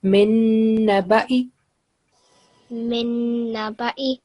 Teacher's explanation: noon is carrying shadda or small W sign, so we produce 2-second nasal sound